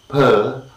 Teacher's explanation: the voiceless, bilabial, plosive, per